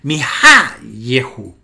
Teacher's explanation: la acentuación por razones de sintaxis pasa de la penúltima sílaba a la antepenúltima sílaba